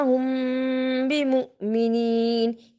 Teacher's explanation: یہاں ہم نے اخفاء شفوی کو ادا کیا، یعنی میم ساکن کے بعد یہاں با آ رہا تھا